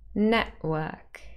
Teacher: the t sound is not dropped, it changes into a glottal stop. So this is not elision.